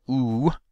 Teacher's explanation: the tongue body is raised and retracted, so that will make a constriction in the rear part of the vocal tract. That constriction then creates a resonator in the pharynx region for that vowel as well.